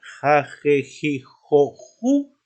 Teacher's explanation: Ja, je, ji, jo, ju es un fonema velar sordo